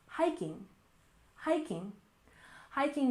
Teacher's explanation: stress the first syllable hiking